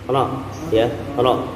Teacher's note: Ujung lidah nempel ke langit atas, geter. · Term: makhraj ro